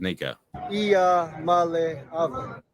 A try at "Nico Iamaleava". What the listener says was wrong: I think you might have an extra vowel, though.